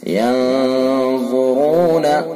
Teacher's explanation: افلا ينظرون الى الابل كيف خلقت، ينظرون نون ساکن ہے اور اس کے بعد اخفا کے 15 حروف میں سے ضا ہے، لہذا اخفا حقیقی ہوگا، یعنی اس کے اندر غنہ کریں گے، اس کو خیشوم سے نکالیں گے ناک کے واسطے سے. ينظرون ضا کو پر کر کے پڑھیں گے، را کو پر کر کے پڑھیں گے